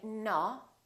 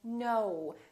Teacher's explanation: So it's actually two sounds, it's O and U together. So you have to move your mouth from O to U